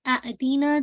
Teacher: مد البدل کو بھی 2 کاؤنٹ، ٹھیک ہے. اس کو بھی 2 کاؤنٹ پڑھا جاتا ہے.